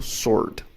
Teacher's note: Apesar de eu ver sword ali, eu não falo W